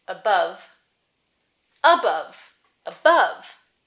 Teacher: second syllable stress but both syllables have the uh sound